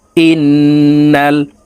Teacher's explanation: সর্ব অবস্থায় নাকের পাশে থেকে গুন্না করিয়া পড়িতে হয় এ কারণে এই হামজা তাশদি নুনের সাথে নাকের পাশে থেকে তিন সেকেন্ড পরিমাণ গুন্না করে ধরে রেখে পড়বো দেখুন এভাবে পড়তে হবে হামজাহ নুন জের ইন্ নুন লাম জবর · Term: ওয়াজিব গুন্না